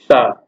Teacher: शा का ध्वनि उच्चारण का स्थान है, शा शरीफा वाला सा है, इसका ध्वनि उच्चारण स्थान तालव्य है, मतलब तालु से जीभ छूती है तब इसकी आवाज आती है